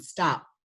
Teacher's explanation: The lips met, but no explosion.